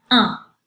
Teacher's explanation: If it's a masculine word, it's pronounced un. I put that little n in parentheses to mark the fact that it's a little bit nasal, and again, unpronounced, the n.